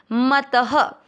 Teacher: को मत दोनों अक्षर पूरे दोनों में अ मिक्स करेंगे मत त में अ की मात्रा तो विसर्ग को पढ़ेंगे ह